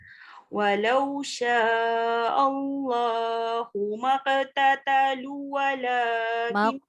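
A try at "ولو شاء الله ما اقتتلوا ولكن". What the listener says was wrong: Maqtatalu wala. Ya, patutnya baca panjang. Panjang.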